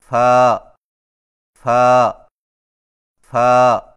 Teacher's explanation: فا کی ادائیگی میں ثنائے اولیاء کے سروں کو نچلے ہونٹ کے گیلے حصے پر لگا کر باریک آواز میں پڑھیں